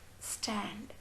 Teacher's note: the vocal cuts are wide apart and so they don't vibrate when the tip is suddenly removed from the teeth ridge the compressed lung air escapes with the slight explosive sound